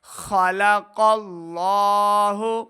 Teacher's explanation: قاف کو لفظ اللہ کے لام کے ساتھ ملانا ہے، لفظ اللہ کا لام موٹا پڑا جائے گا، لام کے اوپر کھڑا زبر دو حرکات اس کو لمبا کرنا ہے۔